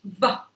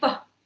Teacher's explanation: But the difference in the two the difference between the two is in the the voicing. V is voiced and F is voiceless.